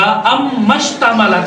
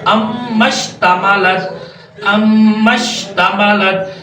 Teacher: अलिफ को हम नहीं पढ़ेंगे। अम्मश्तमलत हम मीम को डायरेक्टली शीन के साथ मिला देंगे, और शीन जो है फिर मुशद्दद है, शीन मुशद्दद है, हम इसे डायरेक्टली उठाएंगे और उसके साथ मिला देंगे, ठीक है।